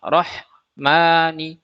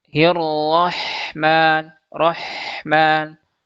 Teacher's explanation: huruf H dia juga punya sifat rokhwah sehingga suaranya juga harus dialirkan.